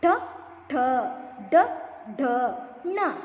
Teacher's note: ನಾಲಿಗೆ ಹಿಂಭಾಗದಲ್ಲಿ ಚಾಚಿಕೊಂಡು ನಾಲಿಗೆಯನ್ನು ಹಿಂದೆ ಸೇರಿಸಿಕೊಂಡು ಮುಂದೆ ಮೇಲ್ಭಾಗದಲ್ಲಿ ಸ್ಪರ್ಶಿಸಿ ಉತ್ಪತ್ತಿ ಆಗತಕಂತ ಅಕ್ಷರಗಳಿಗೆ ನಾವು ಮೂರ್ಧನ್ಯ ಅಂತಹೇಳಿ ಕರೀತೀವಿ